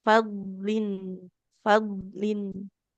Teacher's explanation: huruf dal itu bukan huruf qalqalah jadi nggak boleh dibacanya memantul.